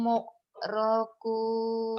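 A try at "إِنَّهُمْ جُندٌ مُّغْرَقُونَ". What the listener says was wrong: orang Jawa ya, muk-muk aja. Udah di Malaysia tetap aja G-nya ke K. Mug. G. Mugrokun.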